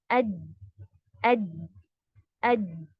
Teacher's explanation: जीम के मखरज पर आपकी जुबान जब लगेगी, तो वॉइस जो है वो रुक जाएगी, अज, अज। हम्म आपको यानी कि फ्लो नहीं हो रहा ना, अज ऐसे कुछ नहीं हो रहा, आपका पास ऑन नहीं हो रहा है वॉइस, अज, अज। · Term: शिद्दा